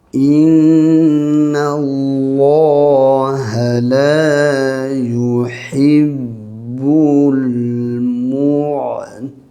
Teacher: Inna dengannya wajibul ghunnah nun sabdu. Kalimah Allah tebal sebab ada baris atas sebelumnya